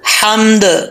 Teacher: ہا بریک ہے، اس کا تعلق حلق سے ہے